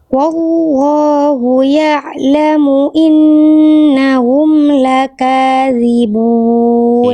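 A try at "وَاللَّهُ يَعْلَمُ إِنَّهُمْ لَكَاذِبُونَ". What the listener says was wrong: Ip. Bagus.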